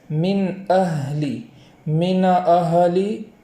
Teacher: اور آگے والا جو کلمہ ہے اہلی، اس میں بھی اس بات کا خیال رکھنا ہے کہ ہاں پر جو جزم ہے وہ زبر نہ ہو جائے، اس کو اس طریقے سے پڑھیں گے من اہلی، من اہلی، اس طریقے سے نہیں پڑھیں گے۔